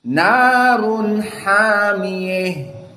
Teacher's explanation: So now hamiyeh we reading with al-imalah al-kubra. Why? Because ha at-ta'nis, ta al-marbutah, the name is ha at-ta'nis.